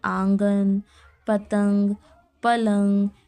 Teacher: جان، پان، دھان، نمک، انصاف، پورا نون جو ہے وہ ظاہر ہوگا. نون غنہ میں کیا ہے، اس کی آواز ناک سے نکلتی ہے